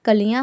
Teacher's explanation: जो न की ध्वनि है बच्चों, या न का जो आवाज़ है वो हमारे नाक और मुंह से दोनों से निकल रहा है। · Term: अनुनासिकी